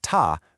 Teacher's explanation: For the second ta, make a quick upward sweep.